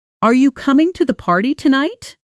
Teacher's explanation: Notice how my voice lifted upward on the last word. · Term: rising and falling intonation